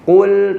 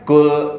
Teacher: Qaf tebal. Qaf itu tebal. Kaf tipis, ada hamesnya.